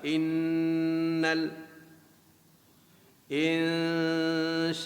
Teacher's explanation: nun yang bersabdu, wajibul gunnah, wajib kita dengungkan bacaan 2 harakat